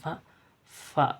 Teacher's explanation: gigi bagian atas menyentuh bibir bagian bawah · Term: syafawi asnani